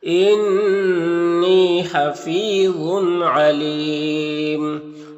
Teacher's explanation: انی نون مشدد غنہ ہوگا اور یا مدہ ہے، ایک الف کے برابر کھینچیں گے · اور ذا حروف مستعلیہ میں سے ہے تو پر پڑھیں گے اور اس کے اوپر تنوین ہے، اس تنوین کے بعد عین ہے حروف حلقی میں سے تو اظہار حقیقی ہوگا، اس تنوین کو ظاہر کر کے جلد پڑھیں گے۔ اور یہاں پر وقف کی صورت میں مد عارض وقفی ہوگا تو اس طرح سے پڑھیں گے۔